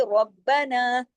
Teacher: ربنا سختی سے جڑے گا را، اور را موٹا بھی پڑھا جائے گا، ہیوی پڑھا جائے گا زبر کی وجہ سے، تشدید کی وجہ سے.